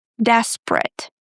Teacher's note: In the word desperate, we drop the second E.